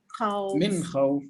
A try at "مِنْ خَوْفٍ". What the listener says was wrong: من خوف. من خوف. Don't pull the noon. The noon, don't pull it. Don't say من خوف. من خوف. It's like you're taking a knife and cutting between them. إظهار. من خوف. من خوف. Not من خوف. Min khawf.